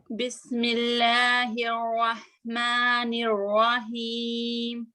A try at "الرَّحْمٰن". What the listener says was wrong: رو، رحمان، رحمان، رو. تھوڑا سا اگر آپ پیچھے سے اور اٹھائیں رو کے لیے.